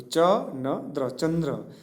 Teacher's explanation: ચંદ્ર લખાય ત્યારે ખરેખર તેના વર્ગના અનુનાસિક વ્યંજન સાથે ચંદ્ર બોલાય છે.